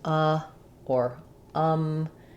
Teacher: So my tongue is resting in the bottom of my jaw, but my mouth is not very open.